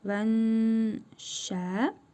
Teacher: İhva qaydasına görə nun hərfini burnumuzda tələffüz edərək bir əlif miqdarı uzadırıq